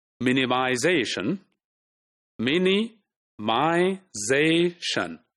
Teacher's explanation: Like in this word, minimization, minimization, okay? So, ze, the second last syllable is stressed primarily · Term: primary stress